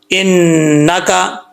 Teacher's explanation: نون کے اوپر شد ہے، غنہ کریں گے